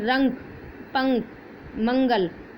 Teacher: अनुस्वार, इनका उच्चारण करते समय श्वास केवल नाक से ही निकलता है